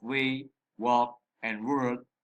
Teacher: We can also describe the w sound found at the beginning of way, walk, and word as bilabial.